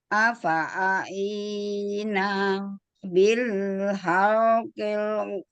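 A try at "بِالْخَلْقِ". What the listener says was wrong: Bil khul. Kok bukan hal. Khul.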